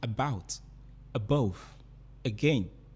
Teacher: have two syllables but you find out that the first syllables the first syllables of the words are unstressed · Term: iamb